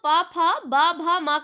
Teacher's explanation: प भ म का उच्चारण हम लोग कहां से करते हैं दोस्तों? ओष्ठ से करते हैं।